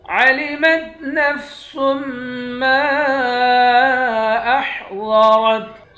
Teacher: ضاد اور را دونوں کو موٹا پڑھیں گے